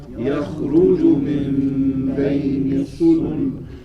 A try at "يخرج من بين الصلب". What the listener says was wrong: Now you gotta double that Sad. بين الصلب. بين الصلب. بين الصلب. يخرج من بين الصلب. يخرج من بين الصلب.